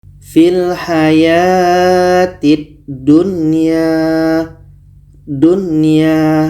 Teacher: tidak ada dengung dan Nun jelas Ya jelas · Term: izhar wajib